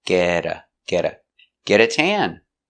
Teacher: The T in get is between vowels, so you will hear getta, a fast D sound.